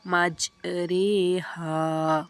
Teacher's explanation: را ممالہ زیر اور یا کی طرف مائل ہونے کی وجہ سے باریک پڑھی جاتی ہے، جیسے مجریہا۔